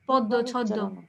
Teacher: যে শব্দের শেষে বা মাঝখানে হলে ওই মটা উচ্চারিত হবে না, কিন্তু ওই ব্যঞ্জনটা 2বার উচ্চারিত হবে